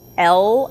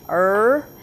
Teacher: the sound is L in the front tongue tip up and the r is in the back